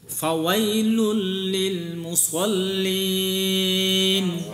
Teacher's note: সাদ জবর সোয়া আর সিন জবর সা, সোয়া এর মুখটা গোল হবে, ঠোঁটটা গোল হবে। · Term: সোয়াদ